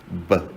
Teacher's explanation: So place, for the letter B, it's a bilabial. B, you use your 2 lips. That's what bilabial means, to produce the sound. Stop. That means we stop the air to do a stop.